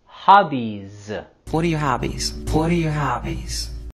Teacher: hobbies here we're also going to have our falling intonation and pay close attention to the z sound at the end of hobbies